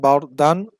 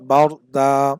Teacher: দুই জবর ওয়ালা হরফে থামলে এক আলিফ টেনে পড়তে হয়